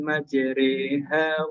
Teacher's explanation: Kasroh itu dimiringkan begitu Pak. Jadi bunyinya jadi E gitu Pak.